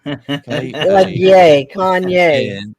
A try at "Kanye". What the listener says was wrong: There's no yay. It's Kanye. Well, where's the yay? There's no yay.